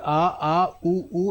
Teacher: जीवा का जो पश्च भाग है वो थोड़ा सा ऊपर उठता है और जीभ थोड़ी सी पीछे सरक जाती है